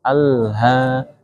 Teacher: Jadi lamnya ketika sukun tidak mantul